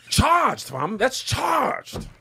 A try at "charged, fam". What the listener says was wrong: There's a lot of like raspiness in there.